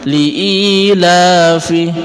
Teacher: Sedangkan li'ilafi, kata la di sini adalah mad tabi'i, 2 ketukan. Mad tabi'i adalah mad asli, jadi panjangnya tidak boleh kita lebihkan dan tidak boleh kita kurangi, harus tetap 2 ketukan.